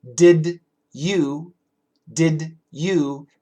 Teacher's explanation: Many times we say did you, did you. We make the D and the Y, we make it a J. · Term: blending